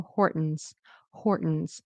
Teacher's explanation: it's also possible not to pronounce the T and just make it a glottal stop.